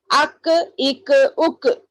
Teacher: آف تھوڑا منہ میں گونج رہی آواز، مگر کاف میں نہیں گونج رہی